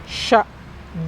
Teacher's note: kalau nyebut Sya selain ada sifat angin mengumpul bagian tengahnya itu nempel ke rongga e mulut atas